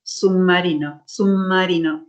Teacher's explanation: La diferencia es que esta B va a perder su modo oclusivo y se va a hacer nasal. Entonces, cuando nosotros decimos, articulamos, hablamos y decimos, no decimos submarino, decimos submarino, submarino.